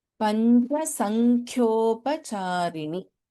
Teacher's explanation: We have here Kha, which is a Mahaprana Akshara, which is a Samyukta Akshara here.